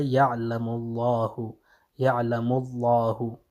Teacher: لفظ جلالہ کا جو لام ہے اس سے پہلے اگر ضمہ آ جائے تو اس وقت بھی کیا ہوگا جناب یہ لام تفخیم ہوگا